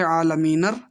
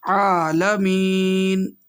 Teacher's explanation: جو عالمینر تھا یہ ملانے میں پڑھیں گے عالمینر، لیکن جب رکیں گے تو ہو جائے گا عالمین، زبر ہٹ جائے گا، ساکن بن جائے گا، جزم لگ جائے گا، عالمین۔